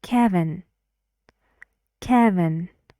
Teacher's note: two syllables and the stress is on the first